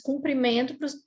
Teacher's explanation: Aqui no nosso mineirês, que a gente usa muito o U, né, o O com esse som de U, a gente acaba falando às vezes cumprimento para as duas situações.